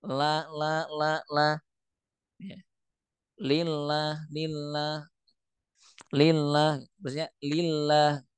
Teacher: seperti memasukkan gunah pada huruf lam